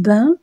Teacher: langue en avant la longue touche les dents du bas et l'air passe par la bouche et par le nez c'est une voyelle nasale